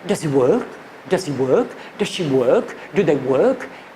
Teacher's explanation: the voice right at the end of the words just goes up like this. So if you imagine like that, it's does he work? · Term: rising tone